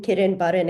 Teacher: With the Latin kitten button example, it's super weird that we have a glottal stop followed by an N. This is like the only place we have a glottal stop word medially.